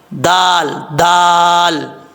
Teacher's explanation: اس کے بعد ہے صاد، صاد حروف مستعلیہ میں سے ہے، پر پڑھا جائے گا، اور یہاں پہ دال ہے صاد کے بعد، دال کے بعد واؤ مدہ ہے، ایک الف کی مقدار لمبا کر کے پڑھیں گے۔ دال کا مخرج زبان کی نوک اوپر والے دانتوں کی جڑوں سے لگے تو دال پڑھا جاتا ہے